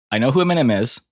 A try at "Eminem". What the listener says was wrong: You were, you were way off. You started on the wrong part of the word.